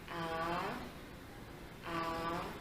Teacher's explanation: A au deuxième ton, c'est montant.